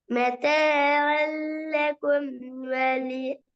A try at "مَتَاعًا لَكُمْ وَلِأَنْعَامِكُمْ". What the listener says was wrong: இப்படி எதுக்கு முன்னாடி ஓதுறீங்க திறமை இப்ப கடைசியா ஓதி நீங்க சின்ன காஃப் வச்சு இப்படி இதே சவுண்டா வந்துச்சு இதுக்கு முன்னாடி ரஹமி இப்ப நான் பிரச்சனை கேட்டு சொல்லி சத்தமா ஓதுனாலும் பிரச்சனைனா எழுத்து மாறுதே ரஹ்மி சத்தமா ஓதுனாலும் எழுத்து மாறுது ஆகவே சத்தத்திலையும் பிரச்சனை இருக்குது இப்ப போ